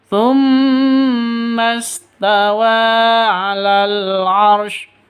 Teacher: Tawa panjang dua ketukan karena ada tanda berdiri di atasnya. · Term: mad asli atau mad thabi'i